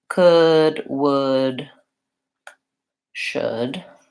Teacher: all of these have that silent L so they are just the vowel and going right into the final D